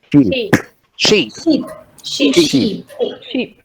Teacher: in sheep, the quality of the vowel remains the same. What varies is the length, right? We only have a difference in length.